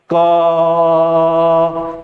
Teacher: अगर मैं क बोलूंगा क तो किसकी ध्वनि बन जाएगी अंत में अ की ध्वनि बन जाएगी